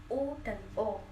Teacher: Kemudian berdasarkan posisi bibir, ada vokal bulat, vokal yang diucapkan dengan bentuk bibir bulat